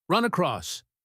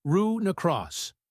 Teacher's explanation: We say r necross. The n sound glides right into the a. It sounds very fluid.